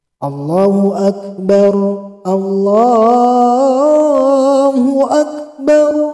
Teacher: Setelah ak itu biasanya para muazzinnya juga mengikuti atau sifat huruf ketika membaca Al-Quran. Jadi kaf itu mengeluarkan udara atau angin ketika melafalkannya. Apalagi ini ketika kafnya ini sukun, jadi agak keluar angin.